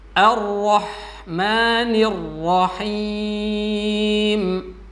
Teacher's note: Ar-rahmanir-rahim itu juga salah karena di situ hak lembut, maka sebagaimana yang disampaikan di awal, hak memiliki sifat hamas, maka dirasakan kelembutannya udaranya.